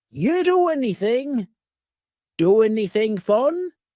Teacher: we sometimes drop the A and we're going to push those two together because there's two n sounds side by side